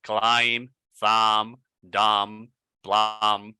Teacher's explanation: every word ending in MB, most of the time, if I'm not mistaken, the B is silent.